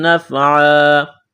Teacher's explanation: وقف کریں گے، دو زبر کی تنوین کو الف سے تبدیل کرنا ہے